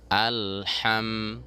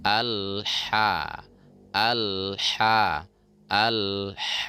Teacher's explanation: jangan sampai ha terbawa ke hidung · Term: ha kecil